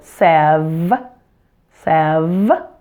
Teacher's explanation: make sure that we stress the first syllable 7 and remember the V sound has the same mouth position as the F just add voice for the V